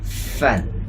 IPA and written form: fən (an)